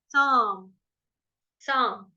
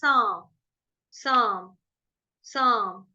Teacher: म जैसे ही होगा, होठ आपको चिपका लेने, लिप्स आपको अपने बंद कर लेने